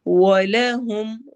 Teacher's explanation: واو میں ہون گول ہوں گے